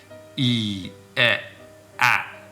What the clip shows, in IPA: iː, e,æ